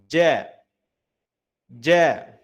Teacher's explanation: ada tempat keluar hurufnya ada pada bagian tengah lidah bertemu dengan langit-langit atas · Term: huruf jim